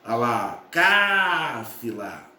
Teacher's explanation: cáfila, sílaba tônica, cá, portanto, é uma palavra proparoxítona